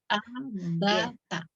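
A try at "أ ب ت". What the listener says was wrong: Ya, salah. Ada sebagian yang agak mengayun ya untuk di pengucapan huruf pertamanya ya. Jadi statusnya huruf yang pertama, kedua, dan ketiga itu harus sama. Ya, tidak ada yang diayunkan karena dia masih dalam satu harokat ya. Tidak boleh ada yang mengayun, kemudian tidak ada hamzah sukun di belakangnya.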